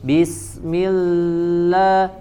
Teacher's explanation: Di huruf lam yang pertama, jangan ditambah jadi panjang harokatnya ya. Bismillah ya, jadi lebih dari 2 harokat ya, karena huruf bertasydid ada huruf sukun dan huruf berharokat, jadi 2 harokat.